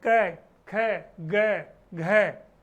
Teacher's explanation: क वर्ग का उच्चारण स्थान होता है कंठे। पूरा का पूरा क वर्ग है वो कंठ, गले पे स्पर्श करती है।